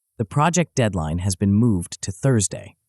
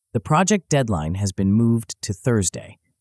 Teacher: the emphasis in the second version ensures The Listener registers the critical information the specific day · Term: strategic emphasis, verbal highlighting